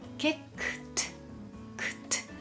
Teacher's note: この kick の過去の ed は t で発音します。